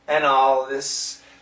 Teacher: here the L makes the TH weak